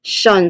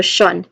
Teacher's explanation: it is followed by a schwa sound, and of course it ends with a nasal sound, sound, a letter N sound.